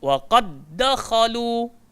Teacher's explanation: Sebab dal yang kedua ada sabdu. Jadi dal pertama mati. Bertemu dal yang kedua ada sabdu, maka dia menjadi idgham. Tak perlu ada qalqalah lagi.